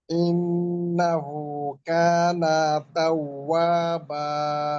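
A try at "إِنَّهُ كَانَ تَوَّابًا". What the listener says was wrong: কানা তাওয়াবা, নাতে কোনো টান দেওয়া যাবে না। নাতে কিন্তু সামান্য টান চলে আসে। কানা ছেড়ে দেন, কানা তাওয়াবা।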